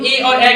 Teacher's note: जैसे छोट ए यानी इसका कंठ और तालु दोनों का सहारा लेना पड़ता है तभी हम ए और ए का उच्चारण कर सकते हैं